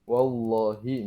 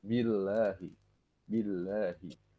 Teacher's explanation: Wallahi itu kan tebal ya. Kalau billah tuh tipis jadinya.